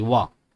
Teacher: वा देखो, दांत का प्रयोग हो रहा है और ओष्ठ का प्रयोग हो रहा है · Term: दंतोष्ठ